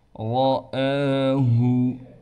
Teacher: وَلَقَدْ، قاف کو موٹا کر کے پڑھیں گے، دال پر قلقلہ کیا جائے گا۔ رَآہُ، را کو یہاں بھی موٹا پڑھیں گے، الف پر کڑا زبر ہونے کی وجہ سے اب الف حمزہ بن چکا ہے اور اس کو ایک الف کی مقدار کھینچ کر پڑھنا ہے